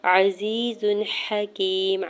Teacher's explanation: عزیز حکیم، عین کے زبر کو جلدی سے ادا کرنا ہے، یا ساکن سے پہلے زا کے نیچے زیر ہے، یا مدہ ہو رہا ہے 2 حرکت کھینچ کے ادا کریں گے ، زا کے اوپر 2 پیش کی تنوین پر اظہار حلقی